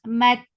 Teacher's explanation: Ta will cut off the sound abruptly.